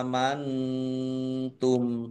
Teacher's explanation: mim sukun bertemu dengan huruf wau bacaan izhar syafawi dibaca jelas